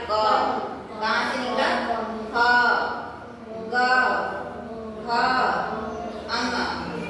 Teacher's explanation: कहाँ से स्पर्श होता है? कंठ से।